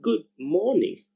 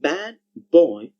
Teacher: the sound d also assimilates whenever it is used in combination with the sounds m, b, and p. It changes to b.